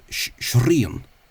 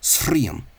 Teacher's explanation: the trilled palatal R, the strong, slender R, became broad. So that would have been something like shrien.